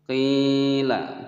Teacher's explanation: qi dibaca panjang sebab di sini ada ya sukun sebelumnya kasroh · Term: mad tabi'i